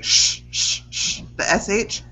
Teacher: Okay, so that refers to the amount of air that you're pushing out of your mouth. So when you say SH, the SH, you're barely pushing any air out.